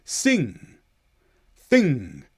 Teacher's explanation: You'll just hear the tiniest click at the end of sing and thing. And that's just where you're releasing the tongue from its position from the top of your mouth, but nowhere is coming through. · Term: little click